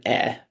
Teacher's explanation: that's the open mid front unrounded vowel